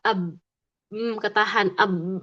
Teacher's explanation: Lalu huruf ba ab m ketahan ab enggak ada nafas, enggak ada suara yang mengalir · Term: syiddah dan juga jahr